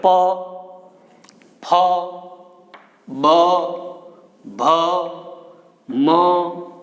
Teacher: ઔષ્ઠ્ય. આપણે પ બોલીએ એટલે હોઠ છે એ ભેગા થાય, હોઠ સ્પર્શે એકાબીજાને